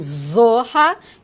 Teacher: Zá, que é uma consoante fricativa alveolar vozeada, como em zorra